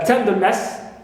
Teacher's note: Also ness, like in tenderness, ness is neutral, and ten, first one is stressed.